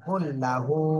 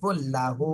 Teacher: লাতে টান দিয়ে যাবে না, কুল্লাহু। কুল হুতে শুধু টান হবে